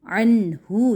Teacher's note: نون کا اظہار، کیونکہ آگے ہاں حروف حلقی کھڑا ہے. حروف حلقی نے اس نون کو اپنی آواز نکالنے پر کیا مجبور.